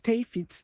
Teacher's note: The D becomes T. So David becomes Tafit.